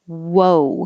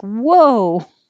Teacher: you have to make your lips small a little bit bigger and small again